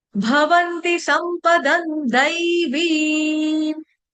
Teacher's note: द के ऊपर जो अनुस्वार यानी कि बिंदी उसका उच्चारण करेंगे हलंत न